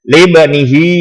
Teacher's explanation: Ada di sini adalah mad silah qasirah, yaitu karena sebelum ha dhamir ada huruf hidup berharokat. Cara membacanya panjangnya 2 harokat seperti mad tabi'i